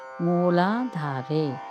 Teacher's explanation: ನಾಲ್ಕು ಅಕ್ಷರಗಳು ದೀರ್ಘವಾಗಿದೆ ಮತ್ತು ಧ ಮಹಾಪ್ರಾಣ ಇದೆ